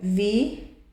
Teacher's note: O mais forte não é o i, é a penúltima.